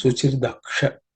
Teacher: the Visarga, at the end of the Daksha gets dropped because it's followed by U. So it becomes Suchir Daksha.